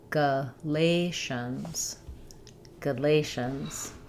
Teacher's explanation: We have Galatians with the stress on the le syllable.